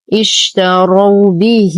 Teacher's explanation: اشتروا به لدينا ها ضمير مفرد مذكر غائب متحركة واقعة بين متحركين توصل بياء مادية وبعدها همز فالصلة هي كبرى، تمد بمقدار 4 إلى 5 حركات وتلحق بالمد الجائز المنفصل.